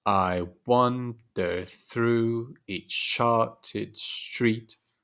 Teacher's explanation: alternation of an unstressed and a stressed syllable repeated four times not five times as in the pentameter but four times tetrameter